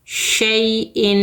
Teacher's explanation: 2 زیر کی تنوین کو 2 حرکت غنّے کے ساتھ پڑھیں گے